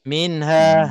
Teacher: bila cepat kita lepas nafas dia akan jadi ha mati pula